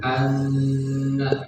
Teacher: Gunnah itu ada dua, huruf gunnah nun dan harus dibaca atau ditahan bacanya dengung lebih lama dari tasydid biasanya